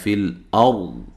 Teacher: جب وقف کریں گے ضاد کو خوب موٹا کرنا ہے، ہلانا نہیں ہے، اور را یہاں موٹی ہو رہی ہے، را ساکن سے پہلے حرف پر زبر ہے۔